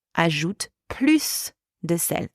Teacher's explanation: the word plus is pronounced plus, where you pronounce the final S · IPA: [plys]